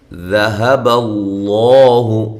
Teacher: لفظ اللہ کو موٹا کرنا ہے، اس سے پہلے زبر آ گئی ہے